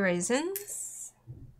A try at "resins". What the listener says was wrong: I always think you're saying raisins. resins.